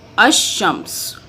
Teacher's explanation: اس کو جب ہم پڑھیں گے تو اس میں لام جو ہے یہ والا لام یہ سائلنٹ ہو جائے گا اور یہ شین جو ہے حروف شمسی میں سے آتا ہے. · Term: لام سائلنٹ